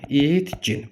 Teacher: Yəni yazılışda ikisi də kar olur əsasən. Tələffüz zamanı isə k g-yə çevrilir. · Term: k g əvəzlənməsi